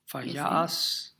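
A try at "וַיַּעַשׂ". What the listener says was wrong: You're doing a different trope phrase, So, mapach pashta katon.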